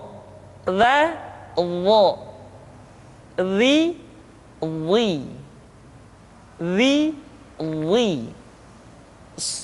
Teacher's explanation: Diucapkan dengan menyentuhkan ujung lidah dengan dua gigi seri bagian atas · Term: huruf dha